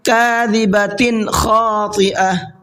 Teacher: کاذبۃ، یہاں تنوین کے بعد میں خا آ رہا ہے، اور خا اظہار کے حرفوں میں سے ہے، تو یہاں پر اخفا غنہ نہیں کرنا ہے بلکہ صاف صاف پڑھنا ہے